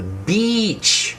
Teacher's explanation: when I make the long E sound, my mouth is not relaxed, it's stressed, and the sound is much longer